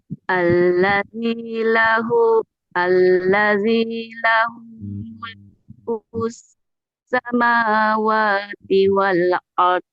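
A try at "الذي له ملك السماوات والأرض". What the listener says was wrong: Nah, watinya jangan jangan diturunkan nadanya. Alladzi lahu mulkus samawati wal ardi wal ard.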